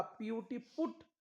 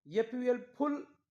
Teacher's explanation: यूचा उच्चार ऊ होत आहे, म्हणजे रस्व ऊ होत आहे